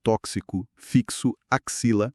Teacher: Esse X tem o som de KS, uma letra, dois sons. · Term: dífono